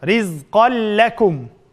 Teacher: Tanvinning keyinda lam keldi. Demek bu yerda g'unnasiz idg'am.